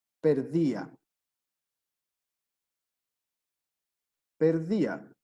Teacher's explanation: el hiato sí va a separar las vocales en sílabas distintas